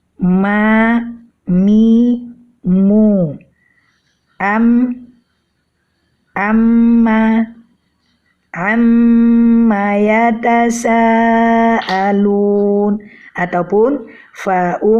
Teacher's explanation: dengan suara unah yang keluar dari rongga hidung sama seperti Nun mim juga mempunyai 2 makhraj yaitu bibir dan rongga hidung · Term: huruf mim